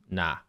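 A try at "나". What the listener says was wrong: It's not exactly like an N. It's not nah. It's more like nah.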